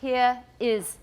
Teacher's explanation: if we don't link it with the r what sound do we have between these words we have a glottal stop there